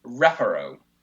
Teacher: in reparo, the second syllable does not have a long vowel and it's not closed, so it should go on the first syllable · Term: penultimate stress rule